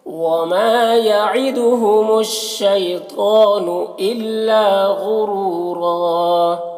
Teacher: یہاں پر وقف کریں گے تو ایک زبر کے ساتھ الف پڑھیں گے